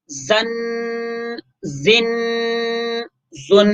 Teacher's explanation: اب اس میں زال اور زا میں یہی فرق ہے کہ زا میں سیٹی کی آواز ہے